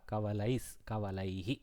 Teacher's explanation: So sakara has come in place of visarga.